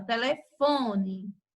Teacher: O acento tônico, ele recai na sílaba fon, porque ela é mais intensa.